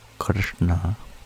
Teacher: tapping your hard pallet with the back of the tongue rather than the tip at your base of your teeth · instead of sh it's a which sounds a little darker and the N is also a retroflex tapping your hard pallet with the back of the tongue rather